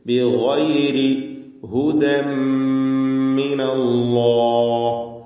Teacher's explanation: ഹുദൻ മിൻ എന്ന ഉച്ചാരണം പൂർണ്ണമായും തൻവീൻ ഉച്ചരിക്കാതെ ശബ്ദമുള്ള മുഷദ്ദദ മീമിനെയാണ് ഉച്ചരിക്കുന്നത്. ഹുദൻ മിനല്ലാഹ്, അല്ലാഹ് എന്ന ഇസ്മുൽ ജലാല അതിലുള്ള ലാമിന് തഫ്ഖീം കൊടുക്കണം, തടിപ്പിച്ച് സ്വരഭാരത്തോടെ ഉച്ചരിക്കുക. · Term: ഇദ്ഗാം ബിഗുന്ന കാമിൽ